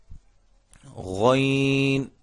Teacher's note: غین یہ بھی حلق سے ادا ہوتا ہے, حلق کے اس حصے سے جو منہ کے قریب ہے وہاں سے یہ ادا ہوتا ہے